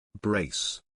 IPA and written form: breɪs (Brace)